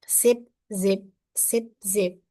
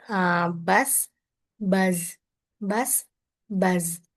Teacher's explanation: Both are alveolar fricative produced by placing the tongue near the alveolar ridge and pushing air through the small space, creating friction. The sound S is voiceless, while Z is voiced.